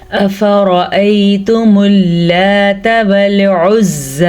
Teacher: حمزہ اور فا کی مقدار کو لمبا کر کے نہیں پڑھیں گے اور را کو پر پڑھیں گے